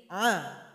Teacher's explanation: dimana keluarnya yaitu ditenggorokan pertengahan sifatnya adalah by Nia atau tawasuth aliran suara sedang tidak tertahan